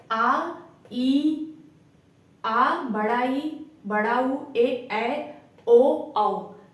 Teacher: जिनके उच्चारण में ह्रस्व स्वर से दुगना समय लगता है, मतलब जिसको बोलने में ह्रस्व स्वर से भी ज्यादा समय लगता है, उसे दीर्घ स्वर कहते हैं।